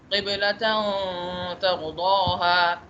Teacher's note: تا کو چھپاؤں گا غنے کے اندر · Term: اخفا